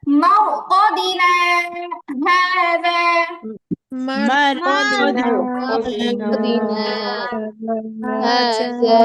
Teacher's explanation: সাক্তা করতে হবে, একটুখানি সময় চুপ থেকে আওয়াজ শ্বাস চালু রাখতে হবে, আর এত দ্রুত পড়া যাবে না যে বুঝলামই না আমি যে সাক্তা করছি।